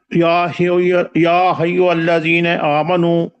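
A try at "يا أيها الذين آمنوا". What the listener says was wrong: یا حی نہیں ہے، یا ایھا الذین آمنوا جی۔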